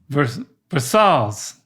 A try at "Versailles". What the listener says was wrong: Dad, you're still saying the L's. Like, say the first half of the word, don't include the L's.